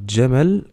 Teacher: La lettre jim correspond à peu près au j français, à la différence qu'on le prononce dj, comme dans une célèbre chanson d'Aya Nakamura, ou encore comme le célèbre pantalon bleu.